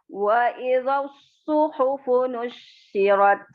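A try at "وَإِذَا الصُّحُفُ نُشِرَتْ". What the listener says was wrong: Syaknya enggak ditahan, langsung nusyirat.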